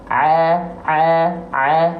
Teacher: a ini dilafalkan dari tenggorokan tengah kita